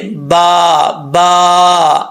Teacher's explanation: है तो वो क्या है तरी वाला हिस्सा ऊपर वाला दांत ऊपर वाले होठ का भी और नीचे वाले होठ का भी तो ये तरी वाले हिस्से दोनों आपस में टच होंगे मिलेंगे तो बा पढ़ा जाएगा